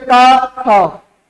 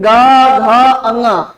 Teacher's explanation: तो जिनमें कंपन ना हो अघोष, और जिनमें कंपन हो उन्हें क्या कहेंगे? सघोष कहेंगे।